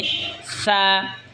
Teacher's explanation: তা এরপর এটা হলো সা। সা জিহ্বার আগা সামনের ওপরের দুই দাঁতের আগার সঙ্গে লাগা উচ্চারণ হবে সা, নরম হবে সা।